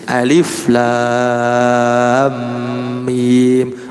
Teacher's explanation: Nama aslinya seperti alif lam mim nggak dibaca alama, tapi alif lam mim. Nah, untuk lam dan mim dipanjangkan jadi 6 harokat, sedangkan alifnya tidak, hanya alif saja